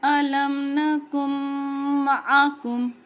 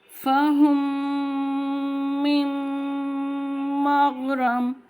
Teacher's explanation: مطلب میم ساکن کے بعد اگر با اور میم آ جائیں تو وہاں پہ غنہ ہونا ہے، اکفا ہونا ہے. 2 سے 3 سیکنڈ کا ہمیں ناک میں غنہ کرنا ہے.